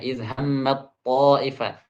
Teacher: Taknya itu diubah menjadi ta. Kemudian dimasukkan ke ta di depannya.